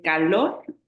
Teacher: No es fácil, yo sé, pero la sílaba tónica es lor. Es calor, la que suena más fuerte es lor